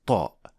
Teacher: Upper Front Teeth with no room for air to pass second the back of the tongue is raised which is a major component for producing the sound properly since it is a heavy or a full mouth letter so the tip of the tongue is pressing against the Ala